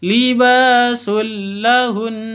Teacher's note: masuk ke lam tanpa dengung tidak boleh dengung